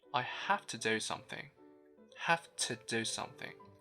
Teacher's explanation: As you can tell, again, we use the schwa sound to replace oo.